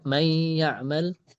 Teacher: Nah, ini nun sama ya hukumnya idgham kan? Nah, ini salah satu sebab kenapa idghamnya, karena makhraj nun sama ya itu berdekatan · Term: idgham bi gunnah